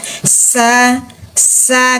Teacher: huruf Sin fathah sa desisnya dulu baru harakat